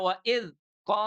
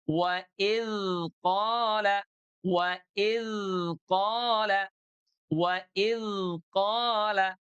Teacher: Huruf dzal itu dia rakhawah mengalir suaranya.